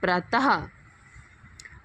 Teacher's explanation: जो विसर्ग की साउंड होती है वो ह की साउंड होती है